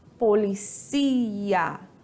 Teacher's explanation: A sílaba mais forte está na última sílaba, ou seja, nós temos uma oxítona.